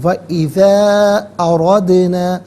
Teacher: اردنا میں را پر زبر ہے، را کو پر کر کے پڑھیں گے۔ وَإِذَا أَرَدْنَا، اردنا میں دال ساکن ہے لیکن چونکہ یہ حرف قلقلہ ہے تو ناظرین آواز لوٹتی ہوئی محسوس ہونی چاہیے، اردنا نہیں، اردنا۔